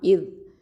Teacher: இந்த நுனி நாவு மேல் பற்களுக்கு கீழே வச்சு சொல்லணும்